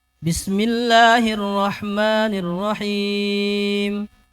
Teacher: Him jangan turun dia. Dia datar. Bismillahirrah yang turun arrahmani.